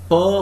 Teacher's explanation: has to be defined as an unvoiced bilabial plosive to account for all the oppositions found with the other consonants